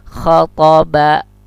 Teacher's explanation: Ba ini syafawi, pertemuan bibir atas dan bibir bawah.